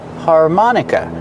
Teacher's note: Put the stress on the second syllable. · The last syllable is the short sound uh like cup and up.